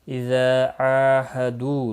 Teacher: عین کے اوپر کھڑی زبر ہے، 1 الف کے برابر کھینچ کر پڑھیں گے